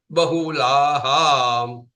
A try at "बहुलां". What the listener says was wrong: Just Bahulam only, not Bahulaham. Bahulam.